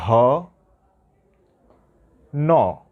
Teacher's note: যেহেতু মূর্ধা থেকে উচ্চারণ হয় এর জন্য মূর্ধন্য ন।